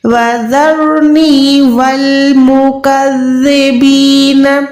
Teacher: ज़बान को थोड़ा सा बाहर निकाल के ऊपर वाले दो दांतों से टच करेंगे तो ज़ाल जो है सॉफ्ट अदा होगा, इसमें सीटी नहीं आएगी। ठीक है, इसके साथ वाली रॉ को आपने मोटा पुर अदा करना है।